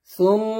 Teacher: সুম এখানে অবশ্যই গুণনা দিয়ে করতে হবে